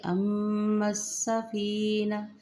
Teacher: میم مشدد پہ غنہ کریں گے، میم کو سین کے ساتھ ملائیں گے